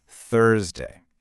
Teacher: that starts with that thir sound, you know, where your tongue is between your teeth. Thursday. The key is that little H in the spelling.